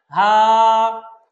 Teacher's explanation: এই হরফটা উচ্চারণ হবে কণ্ঠনালীর শেষ ভাগ হতে